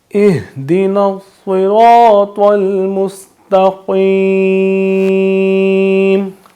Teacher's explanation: قاف بھی حروف مستعلیہ ہے، قاف کو بھی پر پڑھیں گے